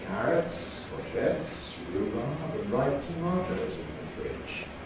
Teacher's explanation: each of those lexical stresses comes out again as a sentence stress